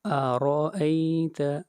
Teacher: را کے اوپر زبر ہے، را کو موٹا پڑھا جائے گا